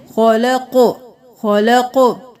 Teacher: جب بھی قاف ساکن ہوگا تو آواز پلٹ کے واپس آئے گی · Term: قلقلہ